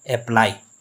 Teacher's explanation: अब अप्लाई अब इसमें ए पे इतना ज़्यादा जोर नहीं दिया गया जितना प्लाई पे दिया गया है।